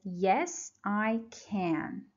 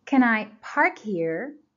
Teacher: as you see in this short positive answer can is stressed that's the only place we stress can when it is in